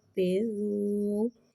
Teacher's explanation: واو زال پہ پیش ہے تو لہذا پیش کو ہونٹوں کی گلائی کے ساتھ ادا کر کے پڑھیں گے